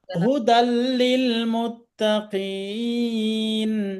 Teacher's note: গুন্না ছাড়া ঈদগাম হবে। হ্যাঁ, গুন্না ছাড়া ইদগম হবে, গুন্না হবে না।